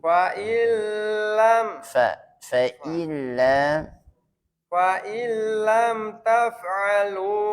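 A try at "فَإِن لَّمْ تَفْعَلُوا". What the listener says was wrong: A-nya jangan mantul, Pak. Fa-nya jangan mantul.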